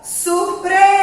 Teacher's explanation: a sílaba mais forte é o pre